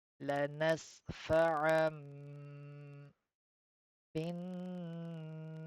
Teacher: We need to change the noon sakin into the meme. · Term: iqlab